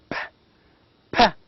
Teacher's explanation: Because the 2 lips are responsible to produce the sound P. So it is a bilabial sound.